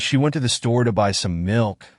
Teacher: stress falls on went store by in milk